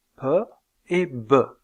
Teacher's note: vous avez un blocage de l'air au niveau des lèvres, puis une libération brutale, puisque ce sont des occlusives. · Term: occlusives bilabiales